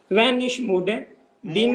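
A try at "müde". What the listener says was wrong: मूडे नहीं है, मूडे नहीं है, सीधा अपना म्यूडे।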